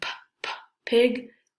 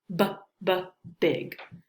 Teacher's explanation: like the difference between P and B, P and B, like P, P, pig, B, B, big, right? The difference is voicing.